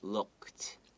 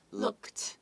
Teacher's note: The look, and then add ed, looked. Okay, there's a kt sound. The d kind of sounds like a t, right?